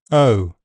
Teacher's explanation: O is a diphthong vowel sound that moves from a central mid position to a near close near back position. O. The first part of the diphthong is unrounded, and the second part can be slightly rounded, or unrounded, O. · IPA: /əʊ/